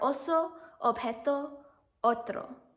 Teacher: The English letter O is O in Spanish. When used in words, it sounds like O, and it's more rounded in Spanish than in English.